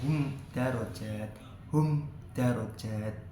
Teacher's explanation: syafawi terdapat mim sukun yang bertemu dengan Dal di lain kalimat dengan menempelkan kedua bibir dibaca tanpa adanya dingung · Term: izhar syafawi